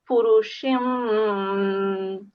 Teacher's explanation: Because we have a little meme at the top, we need to recite it with the meme, and we've got the ba mutaharrik, the ba carries a fatha, as you can see. So we'll recite it with a bit of a ghunna sound as well.